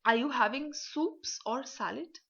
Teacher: first your voice will rise and then it will fall right in the same sentence · jo number one choice but your voice will raise rising intonation on the second choice your voice will fall